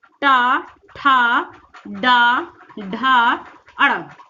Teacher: देखिए, आपकी जीवा ऊपर की ओर जा रही है तो मूर्धा से हो जाता है, इसका जो उच्चारण स्थान होगा मूर्धा से होगा। · टा। देखिए, आपकी जीवा ऊपर की ओर जा रही है तो मूर्धा से हो जाता है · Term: टा वर्ग